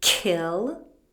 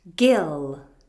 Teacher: The K sound is voiceless and the G sound is voiced.